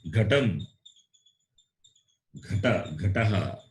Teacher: Ga, gha. Okay, so it is guttural and it is Mahaprana.